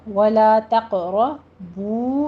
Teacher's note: تقربو میں بھی قوف کے اوپر قلقلہ کرنا ہے، قوف کو پر بھی پڑھنا ہے. را مفخم پڑھی جائے گی.